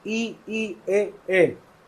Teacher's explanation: जब मैं इनको बोलता हूँ गोल नहीं है, आवृत हैं